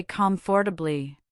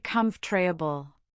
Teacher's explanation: The or sound often vanishes. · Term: elision